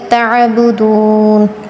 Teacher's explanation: عین میں حلق پر زور دے کر